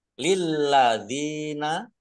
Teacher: thii lamah wau sukun juga Mad thii panjang dua harakat lilladzina lamnya dibaca dobel ada tasdidnya